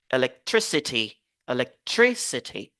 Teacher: on se focalise donc sur la syllabe avant it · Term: l'accent primaire